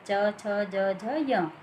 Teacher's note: तालु से निकलने वाले च वर्ग के वर्ण हैं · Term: तालव्य वर्ण